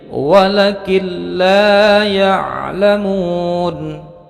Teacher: nun sukun bertemu dengan lam maka ditasydidkan tidak mendengung pendek cukup ditahan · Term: idgham bilagunnah